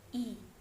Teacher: adalah bunyi vokal gini nah pada kata Imelda ih disini menggunakan tinggi-rendah lidah tinggi atas gerak lidah bagian depan struktur tertutup dan bentuk bibir tak bulan contoh pengucapannya adalah i-yah kedua merupakan